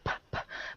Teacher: a sound that you're making you're just um it's like stopping you're actually stopping the sound and then you're stopping air and then you're throwing air out of your mouth · no P is unvoiced for sure